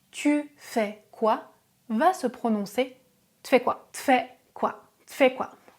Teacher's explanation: Si le verbe commence par une consonne, le U peut disparaître ou il est prononcé de manière très légère.